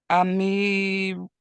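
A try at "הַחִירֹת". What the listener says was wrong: That's a chet. Achirot. Achirot.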